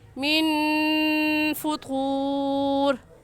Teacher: کیونکہ نون ساکن کے بعد حروف حلقی جو کہ 6 ہیں، حمزہ، ہا، عین، ہا، غین، غا، ان میں سے کوئی لفظ بھی نہیں آیا، اس لیے اس نون ساکن پر ہم غنہ کریں گے